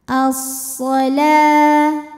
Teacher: alif lam tidak perlu dibaca, jadi masuk langsung ke shad atau biasa disebut dengan idgham syamsi